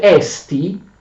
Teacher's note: Oppure si dice esti, ritraendo l'accento, quando significa esiste, esistere, ma in questo caso significa essere, verbo essere, quindi non ha un accento, si pronuncia esti solo quando tu prendi la parola da sola.